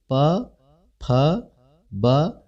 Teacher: आपके होठ एक दूसरे को छू रहे हैं। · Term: ओष्ठ